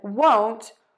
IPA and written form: woʊnt (won't)